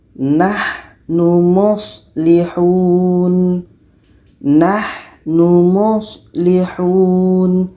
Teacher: Kita alirkan suara sedikit untuk ha dan sha. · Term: rohawah